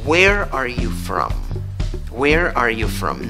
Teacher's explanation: no levante la entonación va para abajo